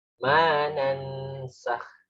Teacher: Jadi ma 2, nan lebih panjang dari 2 tadi. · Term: ikhfa